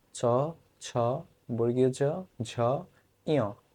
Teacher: ফুসফুস হতে তাড়িত বাতাস, ফুসফুস হতে তাড়িত বাতাস কণ্ঠনালী দিয়ে প্রবেশের সময় জীবের ডগা উপরের পাটির শক্ত তালুতে লেগে যে ধ্বনিগুলো উচ্চারিত হয় সেটাকে বলা হয় তালব্য ধ্বনি